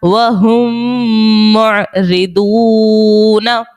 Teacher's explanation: میم ساکن کے بعد ایک اور میم ہے، ادغام شفوی کا قاعدہ ہوگا اور غنہ بھی کریں گے